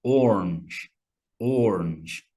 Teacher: Orange, the color, but in some American accents, to me, it sounds like orange, just like one syllable